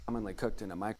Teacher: with very little enunciation on that K sound, it's almost like it's that mix between the K and the G. Almost like it's like a guttural almost.